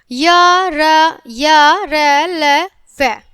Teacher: अंतस्थित व्यंजनों में जिह्वा मुख के किसी भी भाग को पूरी तरह से स्पर्श नहीं करती है। जब इन्हें बोलेंगे तो वहां पर हमारी जीभ स्पर्श नहीं करेगी।